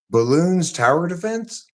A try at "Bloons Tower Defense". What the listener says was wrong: The thing is, it's not balloons. It's balloons. It's literally called that. Bloons.